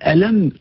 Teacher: كيشوف باني سديت فمي وبان الصوت انتقل للانف